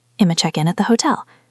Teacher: Check and in link to become check-in.